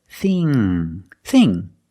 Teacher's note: the ng makes a sound with the tongue in the back.